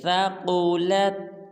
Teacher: ثاقو کی قاف کو پر ادا کریں گے